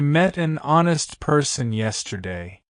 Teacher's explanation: The word honest starts with the letter H, but the H is silent. The word actually starts with the O sound, which is a vowel sound.